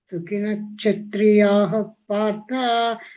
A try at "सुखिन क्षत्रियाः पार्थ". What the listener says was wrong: ಸುಖಿನ ಕ್ಷತ್ರಿಯಾಹ ಅನ್ನಂಗಿಲ್ಲ ಅಲ್ಲಿ ಹ ವಿಸರ್ಗ ಪೂರ್ಣವಾಗಿ ಬರೋದಿಲ್ಲ. ಸುಖಿನ ಕ್ಷತ್ರಿಯ ಪಾರ್ಥ ಅಂತ.